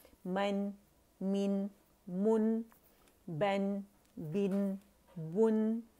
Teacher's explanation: हम नून को हिलाएंगे नहीं, नून का कलकला नहीं करेंगे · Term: नून साकिन